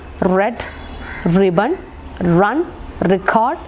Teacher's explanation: The tip of the tongue is against the part which is just above alveolar or just after the alveolar ridge, but there is no direct contact or there is no contact. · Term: post alveolar sound